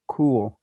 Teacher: my lips are rounded in anticipation of the rounding of the vowel · the K in cool is somewhat rounded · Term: co-articulation